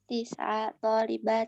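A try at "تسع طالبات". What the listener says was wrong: Kenapa tiba-tiba tis'a? Kenapa kok fathah tiba-tiba? Dari tadi thalathu arba'u khamsu sittu sab'u thamani, tiba-tiba fathah sendiri. Enggak, tis'u.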